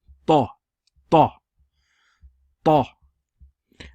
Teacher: you raise the tongue up to the palate and you pronounce it Ta